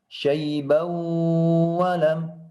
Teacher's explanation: ada idgham bi gunnah, maka wajib dimasukkan pada huruf berikutnya.